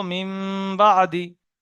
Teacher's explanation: তানবিন বা নুন সাকিনকে মিমের দ্বারা পরিবর্তন করে একালিপ পরিমাণ গুণনা সহ পড়তে হবে। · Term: ইকলাব